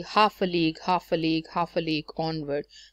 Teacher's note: So you're using stressed, unstressed, unstressed, stress, unstressed, unstressed.